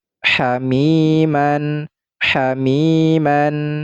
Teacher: mi dihukumi mad tabi'i sebab ya sukun sebelumnya adalah berharokat kasroh. Maka mi ini dibaca panjang dua harokat